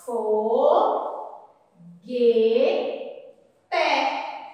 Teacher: Não ouvimos o som da vogal U.